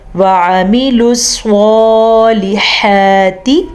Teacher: سواد کو پر پڑھیں گے، سواد حروف مستعلیہ میں سے ہے